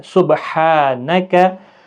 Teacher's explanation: अगर आप नरमी के साथ पढ़ेंगे तो गलत होगा, और थोड़ा सख्ती के साथ हा को अदा करना है